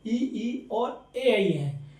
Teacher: अग्र स्वर जो आगे के भाग से बोले जाते हैं